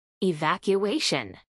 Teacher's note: a pronunciar en inglés por hablantes nativos evacuation cinco sílabas evacuation acentuación en la cuarta sílaba